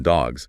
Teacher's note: After sounds made with your voice box vibrating, voiced sounds, like in dogs, it's pronounced Z. After sounds without vocal cord vibration, voiceless sounds, like in cats, it's S.